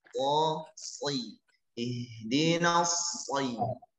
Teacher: Suara menjadi tebal karena salah satu sifat daripada huruf sad adalah isti'la. Lidah kita naik bagian pangkal khususnya, maka suara menjadi tebal.